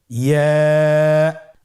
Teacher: ইয়া উচ্চারিত হয় জিহ্বার মধ্যখান তার বরাবর উপরে তালুর সঙ্গে লাগিয়ে উচ্চারিত হয়। আমরা জিহ্বার মধ্যখানটাকে উপরে তালুর সঙ্গে লাগিয়ে উচ্চারণ করি ইয়া।